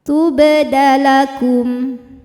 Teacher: Maka cara bacanya adalah dipantulkan dengan pantulan yang kecil. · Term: qalqalah sughra